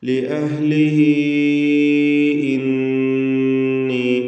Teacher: അവിടെ യാഇനെ 4 or 5 ഹറക്കത്തിൻ്റെ അളവിൽ ദീർഘിപ്പിക്കേണ്ടതാണ് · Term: മദ് അസ്സില അൽ കുബ്ര